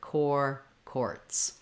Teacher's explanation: You can build that from the w sound by saying war, quar, quartz, or warts, quartz. And then when I'm saying quartz, I just have the k sound, the k, and the or together